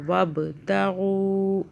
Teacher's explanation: با پہ قلقلہ کریں گے